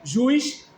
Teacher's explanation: no caso juiz, tanto ju quanto o is são longos. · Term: iato